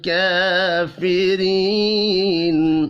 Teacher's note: खड़ी ज़बर को एक अलिफ के बराबर खींच कर पढ़ना है। रा को ज़ेर की वजह से बारीक पढ़ेंगे। या मद्दा एक अलिफ के बराबर खींच कर पढ़ा जाएगा।